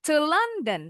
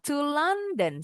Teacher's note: To London langsung dipenggal. To London supaya enggak naik bunyinya. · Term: Intonasinya turun